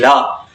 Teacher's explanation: जब हम ला बोलते हैं तो दंत का प्रयोग होता है।